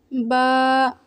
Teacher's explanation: ہونٹوں کے گیلے حصے کو سختی سے ملا کر باریک آواز میں پڑھیں، جیسے با۔ ہونٹوں کے گیلے حصے سے مراد وہ حصہ ہے جو ہونٹوں کے بند کرتے وقت اندر چھپ جاتا ہے۔